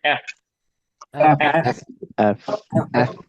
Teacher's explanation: তো অবশ্যই ঠোঁট বন্ধ হবে না, দাঁত লাগবে ঠোঁটে, একটু নরম হবে আওয়াজটা এবং বাতাস রিলিজ হবে